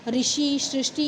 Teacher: हिंदी में इस स्वर का उच्चारण री के रूप में होता है।